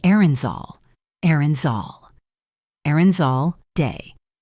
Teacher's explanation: That Z sound at the end links beautifully to the next word, all. It creates a connected sound like errands all, day.